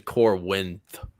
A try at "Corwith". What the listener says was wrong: I don't see an N in there. It's just a pronunciation thing. You're actually adding a letter.